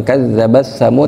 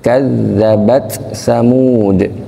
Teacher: Jadi bukan kadzabasamud, tapi dia izhar bukan idgham, bukan melebur